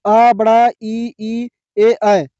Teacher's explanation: अवृत्त मुखी जिनमें होंठ गोल नहीं होते। उदाहरण के लिए अ, बड़ा, इ, ई, ए, ऐ।।